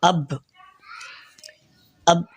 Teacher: جیسے کہ حمزہ با زبر اب با پر جو آواز ٹھہر رہی ہے تو وہی اس کا مخرج ہے۔ با دونوں ہونٹوں کے اندرونی تری والے حصے کو ملانے سے ادا ہوتا ہے